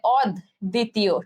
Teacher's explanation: ব উচ্চারণ হবে না, এবং দ এর উচ্চারণ দুইবার হবে, তাহলে অদ্বিতীয়, ঠিক আছে, অদ্বিতীয় দুইবার হয়েছে।